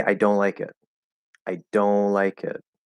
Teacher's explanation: I'm not doing a T. T is completely gone. I'm not even doing an N. I'm not bringing my tongue up into the N at all. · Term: nasal O